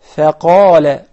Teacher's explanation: I know that the qaf is confusing because it is one of the tafkhim letters, but the fa is not.